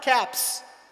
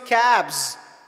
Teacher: Cap is ending in P sound. P is unvoiced consonant. Cab is ending in B sound. B is voiced consonant.